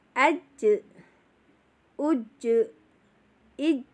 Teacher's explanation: jangan lupa zidahnya harus dikasihkan, yaitu tekan dulu baru dilepas ya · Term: qalqalah